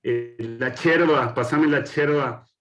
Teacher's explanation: ese ensordecimiento de ye en el español correntino y misionero